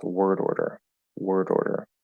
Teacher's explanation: you can sort of hear the d punctuating the the r sounds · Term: flapping d